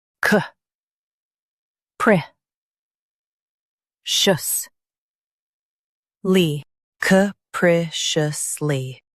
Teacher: Stress pri and keep shus light.